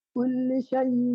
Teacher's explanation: হামজার উচ্চারণ হঠাৎ করে করেন